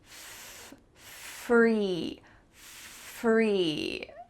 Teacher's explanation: My top teeth are coming onto my bottom lip and there's some stream of air coming through. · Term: F sound